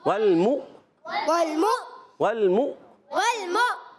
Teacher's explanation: والمؤمنات والمؤمنات گڈ۔ واو کو لام سے ملانا ہے، لام ساکن، پھر میم کو حمزہ سے ملانا ہے، حمزہ کو جھٹکا دیں گے